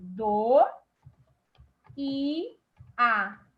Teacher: Observe que o i se separou. Eu tenho cada vogal na sua sílaba. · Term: hiato